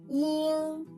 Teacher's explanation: make the e sound, then put the root of tongue against the soft palate. Feel the voice coming out from the top of your head. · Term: the final yin